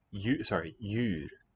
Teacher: The D is written, but it's no longer sounded.